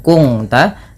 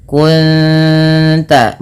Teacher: Cara membacanya bukan kung ta, tapi menyamarkan bunyi suara nun kepada ta dan ditahan bunyi dengungannya dua harakat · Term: ikhfa hakiki